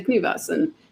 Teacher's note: it was a natural thing to just voice it in that you've got a f between two vowels and knives it's the vowel that comes after it it makes